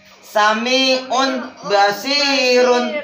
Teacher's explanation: Tegasnya huruf nun sukun atau tanwin itu membacanya ketika itu dibalik atau ditukar menjadi mim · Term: iklab